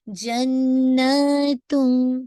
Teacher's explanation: तो जन्नातुन में देखिए अगेन आपने नून पे आपने hold for टू count, because ये अकमल गुन्ना है , and then stretch for टू count, जन्नतुम, ठीक है ना,